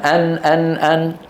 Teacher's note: النون من هنا من طرف اللسان ان ان ان وحروف الحلق من الحلق طرف اللسان والحلق بعيد